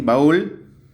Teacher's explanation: Como la vocal tónica, es decir, la vocal acentuada, es la cerrada, también se separa en sílabas diferentes, formando también un hiato acentual.